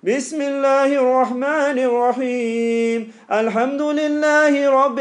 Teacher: it's all very high pitched, because I can tell you're squeezing the sound to try and make it sound nice